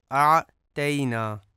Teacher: انا اعطیناک الکوثر، یہاں پہ اعطیناک میں جو عام طور پہ غلطی کی جاتی ہے وہ اعطینا میں عین کو درست طریقے سے ادا نہیں کیا جاتا اور حمزہ پڑھا جاتا ہے اعطیناک۔ اور دوسری غلطی یہ کی جاتی ہے کہ اعطینا میں جو تا ہے اس کو تے پڑھا جاتا ہے، اعطینا کی جگہ پہ اعطینا، جو کہ درست نہیں ہے۔